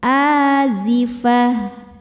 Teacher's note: Tak yang seperti ini namanya tak marbutoh. Cara berhentinya adalah berubah menjadi ha dan sukunnya.